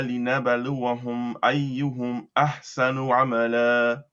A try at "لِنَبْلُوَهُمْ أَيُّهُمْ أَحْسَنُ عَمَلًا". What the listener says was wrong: Less bounce on the ba and لنبلوكم. You want to avoid making it sound like a haraka. لنبلوكم أيكم أحسن عملا.